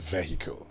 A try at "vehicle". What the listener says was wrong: No. The H in there is not pronounced. No.